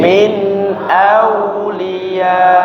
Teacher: ketika berhenti kita kasih tambahan volume suara. Ya, kalau istilah tajwidnya namanya dikasih nabr ya. Dikasih sedikit tambahan volume suaranya.